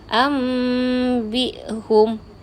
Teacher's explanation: Seolah-olah nun tu dah jadi bunyi mim. Ini hukum nun sakinah bertemu dengan ba.